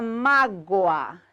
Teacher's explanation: sílaba tônica de mágoa, má, penúltima. Tenho aqui um ditongo, por isso eu tenho mágoa como dissílabo, obrigatoriamente acentuado.